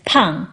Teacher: The mandarin vowel drifts a little bit in the direction of English's a vowel. The tongue is a little bit more forward in Mandarin than in English.